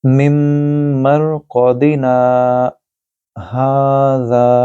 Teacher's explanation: مم مرقدنا ھذا، یہاں بھی سکتہ دیا ہوا ہے، سکتہ کے اندر آپ نے رکنا ہے لیکن سانس توڑے بغیر پورے لفظ کو ادا کرنا ہے